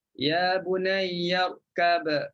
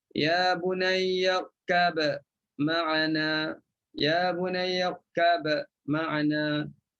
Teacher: Izhar ataupun nyatakan huruf ba, bunyilah qalqalah. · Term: bunyi qalqalah